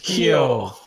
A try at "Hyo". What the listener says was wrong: You're putting too much emphasis on the why.